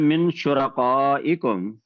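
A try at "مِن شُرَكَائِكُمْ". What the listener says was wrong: کاف جو ہے یہ دو نقطے والا کاف نہیں ہے، شرکا پڑھیے، یہ موٹے والا کاف نہیں ہے، شرکا پڑھیں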